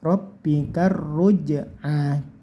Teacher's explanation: Lanjut di huruf ro saja, roknya ditekan, terus bunyikan tebal ya. Rabbika ruj'a, jimnya dikasih mantul karena ini qalqalah sughra. · jimnya dikasih mantul karena ini qalqalah sughra. Ruj'a, anya panjangkan cukup 1 alif atau 2 harokat, ini namanya matobi'i.